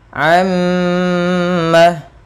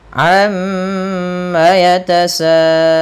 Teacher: menahan suara mimnya sepanjang 2 harokat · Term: gunnah